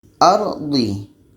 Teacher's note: Ardi, tebal. Dan lidah kita terangkat ke langit-langit mulut. Ardi. Di.